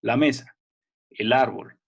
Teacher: el acento fuerte está en mesa árbol y es como que esta sílaba anterior perdiera un poco la fuerza